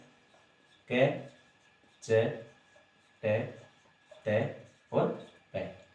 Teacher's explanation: क का उच्चारण स्थान कहां से है, तो कंठ से, च का तालु से, ट का मूर्धा से, त का दंत से, प का ओष्ठ से, ठीक है। ये 5 हैं, 5 वर्गों में इसको विभाजित किया गया है।